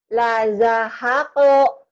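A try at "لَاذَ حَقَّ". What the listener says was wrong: La-nya panjang.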